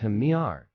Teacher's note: with the emphasis on the first syllable, ham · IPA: /ˈhæmərɪŋ/